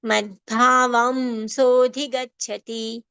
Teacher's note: Bha is a mahapran sound requiring more breath and more prashwas and more strength. Anuswar over va as ma.